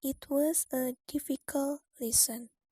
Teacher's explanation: Kata yang ditekankan di sini adalah difficult, yaitu menekankan bahwa pelajaran itu sangat sulit.